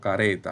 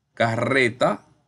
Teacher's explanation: la r entre vocales pero es una vibrante simple por eso se va a colocar una sola ere y suena